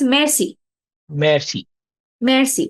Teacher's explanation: the r is very soft that's why it's not always clearly audible but the r you still have to pronounce it so it's